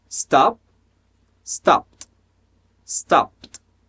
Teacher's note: Então, é um P conectado a som de T.